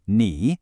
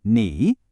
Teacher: It's a third tone, so it has to dip down and then come back up. Listen. Knee.